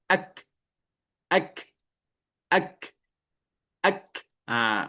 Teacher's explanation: Kalau dalam keadaan sukun, ak, ak, ak, ak, udaranya mengalir.